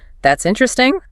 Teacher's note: If I say it flatly with a descending tone, that's interesting. I am politely disengaging or perhaps even signaling sarcasm.